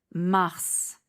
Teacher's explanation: Znači ovdje izgovaramo krajnje S, zbog planete.